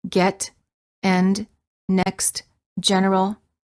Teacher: farther apart than for the A and the lips are relaxed the tongue is also relaxed and in the mid High position the com spelling patterns for this sound are the letter e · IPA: /ɛ/